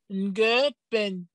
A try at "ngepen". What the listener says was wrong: Ce n'est pas ngepen. Ngepen. Le ton est haut. Ngepenye poum.